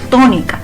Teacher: to es donde lleva una mayor fuerza de voz. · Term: sílaba tónica